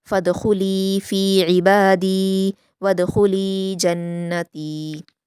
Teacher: اس میں دال جہاں پر آئیں ان کو قلقلہ کے ساتھ پڑھیں گے